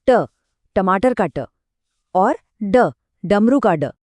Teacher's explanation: इन्हें बोलने का तरीका थोड़ा अलग है। इसमें जीभ को हल्का सा पीछे की तरफ मोड़ना पड़ता है, जैसे ट, टमाटर का ट, और ड, डमरू का ड। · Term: मूर्धन्य व्यंजनों